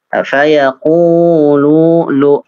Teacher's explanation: Faya itu panjang, qafnya panjang, lamnya juga panjang. Fayaqulu ya lu dua harokat.